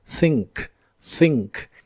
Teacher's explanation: El verbo pensar en el presente de inglés es think. La TH de este verbo es la TH suave de inglés y se pronuncia soplando entre la punta de tu lengua y tus dientes de arriba.